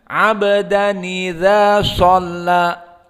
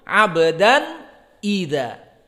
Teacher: Adapun di qiraah Warsh dijadikan nunnya berharokat kasroh dan hamzahnya dihilangkan, jadi tidak ada ida, tapi karena nun tadi berharokat jadi nida.